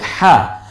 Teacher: গলায় চাপ দিয়ে উচ্চারণ করতে হবে কণ্ঠের মাঝখান থেকে, এবং একালিপ টেনে বলতে হবে। খাড়া জের খাড়া জবর উল্টা পেশ একালিপ টেনে বলতে হয়।